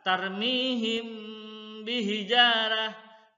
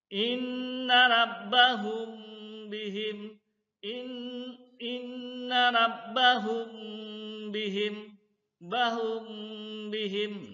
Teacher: dengan menyamarkan bacaan mim sukun atau mati di bibir sambil didengungkan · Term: ikhfa safawi